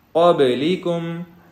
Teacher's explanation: با کے اوپر ساکن ہے اور یہ حروف قلقلہ ہے تو اس کے اوپر قلقلہ کریں گے